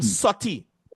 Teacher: So Patwa is sorti. No R at all.